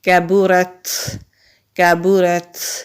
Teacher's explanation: کبرت، یہاں تا ساکن ہے تو تا ساکن پر ہمس بھی کرتے ہیں۔ ہمس کہتے ہیں سانس کے جاری رہنے کو · کاف باریک والا کاف ہے، باریک پڑھیں گے، با کے اوپر پیش ہے، را کو تا سے ملائیں گے، را کو ہم موٹا پڑھیں گے کیونکہ را کے اوپر زبر ہے۔ تا باریک والا تا ہے، موٹا نہیں کریں گے۔ کبرت، یہاں تا ساکن ہے تو تا ساکن پر ہمس بھی کرتے ہیں۔